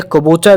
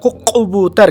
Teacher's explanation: دہلی کی کرخنداری اور عوامی بولی میں کبوتر کو قبوتر کہہ لیتے ہیں